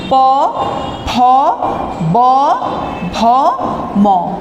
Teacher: প, ফ, ব, ভ, ম, এইগুলো হচ্ছে ওষ্ঠ ধ্বনি